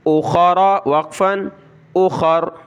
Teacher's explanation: فعدۃ من ایام, حمزہ یا زبر ایا, الف زبر یا, ایام, ایام. اخر, خا اور را کو موٹا کریں گے